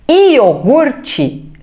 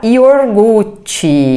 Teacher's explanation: iogurte falar iorgute Isso é uma transposição eu mudo o lugar do r